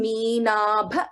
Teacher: Bha is a Mahaprana.